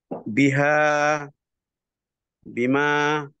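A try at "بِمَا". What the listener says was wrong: না, বিমা মাদ কমে গেল।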